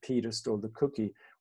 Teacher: where we have the accents on Peter and cookie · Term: broad focus